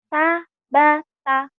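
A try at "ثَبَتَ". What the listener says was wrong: sa ya, sabata. Jangan ditekan-tekan gitu ya. Sabata. Ada wibawa dikit. Sabata. Intonasi ini melatih intonasi ya, melatih penekanan.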